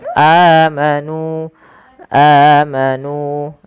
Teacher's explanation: ada hamzah bertemu dengan huruf mad, maka ia kita namakan dengan mad badal. Panjangnya adalah dua harakat.